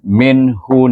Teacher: baca dengan jelas satu harakat jangan didengungkan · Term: izhar halq